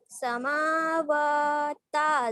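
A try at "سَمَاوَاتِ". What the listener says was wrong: लंबा कीजिए अच्छे से। समावाती।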